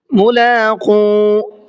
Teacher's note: قاف کو کھینچ کر کے پڑھیں گے، اس لیے کہ یہاں پر واو مدہ کا قاعدہ پایا جا رہا ہے